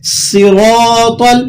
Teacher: را کو آپ نے یہاں ہیوی ویٹ پڑھنا ہے، موٹا کر کے ادا کرنا ہے